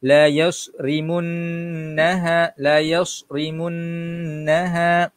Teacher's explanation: Yas kena ada siluan sikit. Ra bacaan nipis ri.